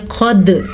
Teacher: قد قاف موٹا اور دال پہ قلقلہ ہو رہا ہے کیونکہ دال حروف قلقلہ میں سے ہے، قد قلقلہ میں جھٹکا